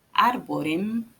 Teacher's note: Arborem, por ejemplo, que tiene dos vibrantes simples, se va a disimilar convirtiendo una de ellas en una lateral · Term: disimilación